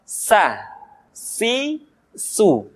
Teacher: Diucapkan sebagaimana kita mengucapkan huruf sa, yaitu ujung lidah di antara dua gigi seri kita.